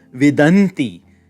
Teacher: now the voicing of that dakara it gets retained right because of the vowel